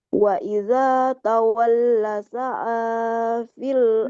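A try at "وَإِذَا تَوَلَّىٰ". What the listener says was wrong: Lamnya panjang. Wa idza tawalla.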